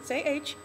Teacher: you're not vibrating your vocal cords it's just purely air